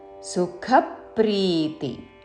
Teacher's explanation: సుఖ మహాప్రాణాక్షము ఖ, దాని మీద ఆఘాత